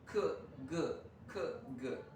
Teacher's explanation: back of the tongue back raised against velum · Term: velaric sound